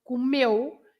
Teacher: The stress is on meu, not comeu.